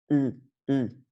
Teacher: Donc le son U, c'est au fond de la gorge. Pour le faire, vous faites un U avec la langue et un I avec les lèvres.